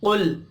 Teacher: क़ाफ हुरूफ मुस्तअलिया है, पर पढ़ेंगे।